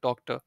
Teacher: just replace in your head the R part with A or A.